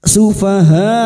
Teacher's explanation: Mad wajib muttasil lima harakat kita panjangkan.